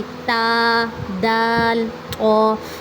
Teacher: नोक जब सनाया उलिया की जड़ के साथ लगे तो इससे ता दाल थ अदा होते हैं। जड़ से लगेगी। · زبان کی نوک، زبان کی نوک سے کون سے حروف ادا ہوتے ہیں، زبان کی نوک جب ثنایا علیہ کی جڑ کے ساتھ لگے تو اس سے تا، دال، طو ادا ہوتے ہیں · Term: निताइया